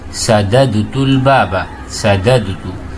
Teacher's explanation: تو آپ دیکھ رہے ہیں سددت میں صرف فک الادغام ہو گیا، یعنی ادغام کو ہم نے کھول دیا، دال دونوں باہر آ گئے، باقی کوئی تغییر واقع نہیں ہوئی.